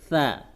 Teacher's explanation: Nun sukun depannya huruf sa. Sa makhrajnya ujung lidah ada di ujung gigi atas.